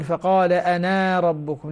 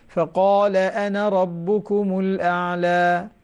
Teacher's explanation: أنا تصبح بمقدار حركة واحدة فقط